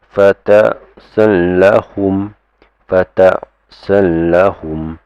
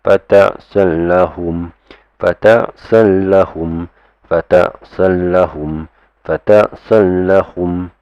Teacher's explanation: Okay, when it's a tanwin mixed with the lam, it becomes fatasallahum, fatasallahum. Try not to lengthen it because there's no nasalization, there's no need of two harakas and all that. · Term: idgham bila ghunna